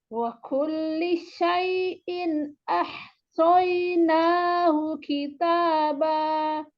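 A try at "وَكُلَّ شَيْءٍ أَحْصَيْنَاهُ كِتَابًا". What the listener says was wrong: Tapi tadi keliru kullah. Tadi dibaca kulli.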